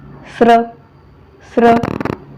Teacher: उच्चार करत असतानी अगोदर स वर्णाचा उच्चार होतो नंतर र वर्णाचा उच्चार होतो आणि शेवटी र सॉरी शेवटी स्वराचा उच्चार होतो कसा तर बघा